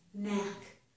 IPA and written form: næk (knack)